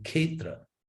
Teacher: You have K, S, and H, K-S-H, kshetra. And so to simplify that in Bengali, they eliminate the middle consonant, the S, and they say ketra.